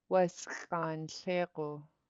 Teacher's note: You have a pinched S and then a pinched X, so both of those sounds will be sharp.